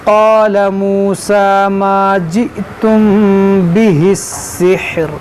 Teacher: यहाँ मीम साकिन के बाद बा है, यहाँ पर इख़फ़ाए शफ़वी होगा।